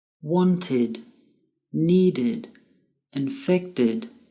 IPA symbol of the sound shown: id